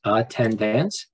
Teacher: there are three syllables, attendance, and the second syllable receives the accent mark